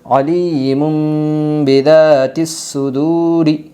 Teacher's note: اقلاب ہوگا دو پیش تنوین کے بعد با آئی ہے، اس لیے دو پیش تنوین کو میم سے بدل کر غنہ اور اخفا کے ساتھ پڑھے گی۔